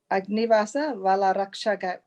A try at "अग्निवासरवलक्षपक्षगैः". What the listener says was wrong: No. I think you are saying the first, the ra comes full ra. Agnivasara. That is a full ra.